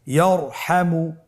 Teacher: তাহলে ইয়ারহামু, র সাকিন তার পূর্বে জবর আছে, র সাকিন তার পূর্বে যদি জবর থাকে অবশ্যই রকে পোর করে মোটা করে পড়তে হবে।